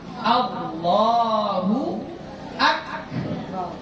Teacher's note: pertama ini A-nya itu dibaca A, jangan O ya, bukan Allah ya, tapi dibaca A.